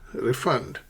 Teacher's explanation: So, stress the first syllable re.